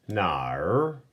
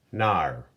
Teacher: You'll notice with our tone markers, this is a falling and rising tone